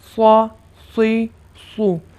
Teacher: سین کو ادا کرتے وقت زبان کا پچھلا حصہ نیچے کو ہی بیٹھا رہے گا اور صاد اس کو مستعلیہ پڑھیں گے، پر پڑھیں گے، اس وجہ سے زبان کا پچھلا حصہ اوپر کو اٹھے گا۔